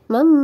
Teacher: tanwinnya kita dengungkan dan kita tahan tiga harakat disertai masuk ke huruf mim